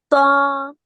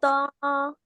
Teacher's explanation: زبان کی نوک اوپر کے دانتوں کے مسوڑوں کی نرم جگہ سے لگ رہی ہے. اوپر کے دو دانت ہیں نا سامنے والے، اس کے پیچھے مسوڑے، جی باجی.